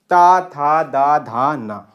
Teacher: ता, था, दा, धा, ना जो ध्वनियाँ हैं वो आपकी दंत होती हैं।